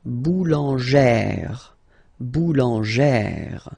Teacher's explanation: you pronounce it like E, really open E sound